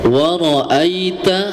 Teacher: ada huruf ya mati, sebelumnya ada huruf yang berharokat fathah ya, jadi bacaannya lunak. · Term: bacaan lin